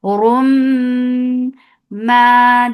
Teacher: Warum and Ra will be heavy, and you will attach it with Meme, and Meme will get sifa gunna. This gunna is akmal, so keep the sound in your nose for a longer time. Rum ma, then it is 2 counts long.